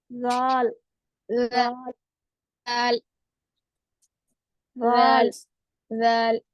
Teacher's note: जबान की नोक ऊपर या नीचे दांतों को किनारों को लगने से अदा होती है